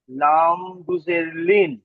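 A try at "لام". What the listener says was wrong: এই লামটি আলিফ থেকে এ পর্যন্ত যখন পড়েছি, তো লামটি ক আলিফ টান দিয়ে পড়েছিলাম। লা তিন আলিফ। তো এখানে তাহলে বলতে হবে লাম দুসের লিন। লাম অক্ষরটি হরফের, হরফের টান হবে, কিন্তু জাবার জের পেশ দুজের দুপেশ যুক্ত করবার পরে আর টান হবে না।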